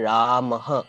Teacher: विसर्ग अपने से ठीक पहले आने वाले स्वर का रंग ले लेता है · वह ह की तरीके से सुनाई देता है। मगर यह ह नहीं बल्कि एक गूंज है। यानी एक इको है।